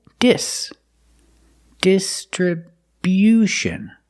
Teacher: This word is distribution. We move the stress to the first and third syllables. The first syllable, dis. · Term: Stress on the first and third syllable